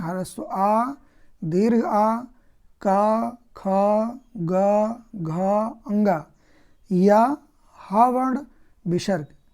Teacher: तो कंठ अर्थात गले से हम किन वर्णों को बोलते हैं? ह्रस्व आ, दीर्घ आ, का, ख, ग, घ, अंगा या हा वर्ण, विसर्ग।